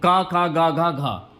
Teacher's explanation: का जो है ना ये कंठ से बोले जाने वाला वर्ण है तो क ख ग घ घ ये कंठ से बोले जाने